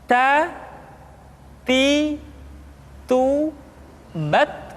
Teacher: huruf ta ketika diucapkan terdengar ada nafas yang mengalir, atau dalam ilmu tajwid disebut dengan sifat al-hamas. · Keluar dengan menyentuhkan ujung lidah kita dengan gusi-gusi gigi seri bagian atas.